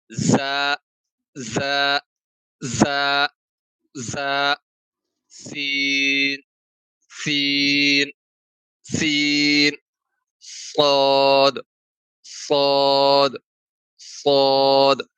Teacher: ٹھیک ہے، اور زبان کی نوک ہلکی سی درمیان میں ٹچ ہوگی، وہ آپ کو پتہ بھی نہیں چلے گا کہ درمیان میں ٹچ ہو رہی ہے. تو یہ تینوں حروف سیٹی کی آواز سے ادا ہوں گے، اور زا کو سختی سے ادا کریں گے اور سین کو قدرے کم سختی سے ادا کریں گے، جبکہ صاد کو بالکل نرمی سے ادا کریں گے اور پر کر کے موٹا کر کے پڑھیں گے.